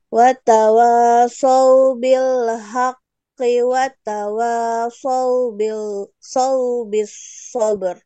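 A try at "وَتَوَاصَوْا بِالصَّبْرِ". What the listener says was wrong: Oke, terus ro-nya tebalkan sedikit lagi. Saubis sabr. Haki, kalau diwasol jadi haki, Bu, dibacanya.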